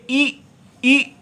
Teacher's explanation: तालु स्थान में कोई स्पर्श नहीं हो रहा। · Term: विवृत प्रयत्न